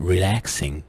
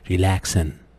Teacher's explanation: So the NG sound is replaced with the نون sound.